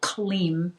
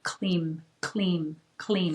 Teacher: the sound of Kali is Kleem, and it comes from the back of the throat, that K-L-E-E-M, if we spell it phonetically.